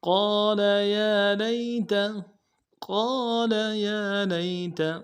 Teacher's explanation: قال میں قاف کے بعد الف مدہ ہے، ایک الف مدار میں کھینچیں گے، قاف کو موٹا کریں گے، لام کے اوپر زبر ہے، نرم سے ادا کریں گے۔